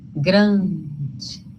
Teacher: É um som em que o ar, o ar passa pelo nariz da gente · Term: nasalizado